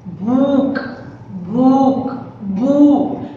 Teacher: देखो भू के साथ थोड़ा सा लंबा मैंने प्रोनाउंस किया, थोड़ा सा लंबा होता है